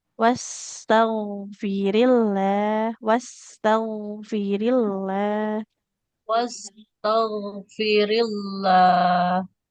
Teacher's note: Ghain dengan sin ini sama-sama mengalir suara sempurna rokhawah ya. Cuman bedanya kalau sin kan tipis ya. Kalau ghain tebal.